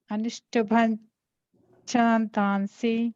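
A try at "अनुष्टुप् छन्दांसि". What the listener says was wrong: No, you're saying Anushtuban or something, right? Anushtubash-ish sound. Anushtubash Chandamsi.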